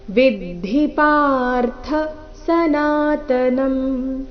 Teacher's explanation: ವಿದ್ಧಿ ಎರಡು ಹ್ರಸ್ವ, ಪಾರ್ಥ ಪಾ ಮಾತ್ರ ದೀರ್ಘ